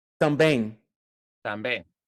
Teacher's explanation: We don't close the lips for the M. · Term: nasal